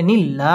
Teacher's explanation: পড়তে হবে দি মদ্দে তবাই এক আলিফ টেনে পড়তে হবে নিল্লা আল্লাহ শব্দের লাম বারিক হবে